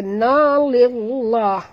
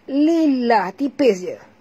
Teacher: dibaca tipis kerana lam berbaris di bawah.